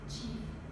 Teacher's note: The Old French affricate survives in chief, in which the vowel has undergone the expected great vowel shift from E to I.